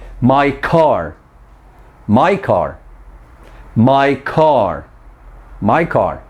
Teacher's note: In the words my and car, we are linking the vowel ya to the stop sound or stop consonant ka. So the ka sound in the linked words my car has a lot of puff of air.